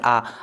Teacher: जैसे आ को बोलेंगे तो पूरा मुंह खुल जाएगा। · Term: विवृत स्वर